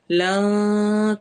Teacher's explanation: نون کی آواز چھپی ہوئی ہوگی، کلیئر واضح نہیں آئے گی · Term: اخفا